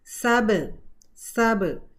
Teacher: बा का मखरज है, दोनों लिप्स को बंद करना और खोलना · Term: कलकला